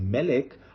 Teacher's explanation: hebrew is telling me that in the word melech that the stressed syllable or the accented syllable is not in the last syllable it is in the syllable in which the monarch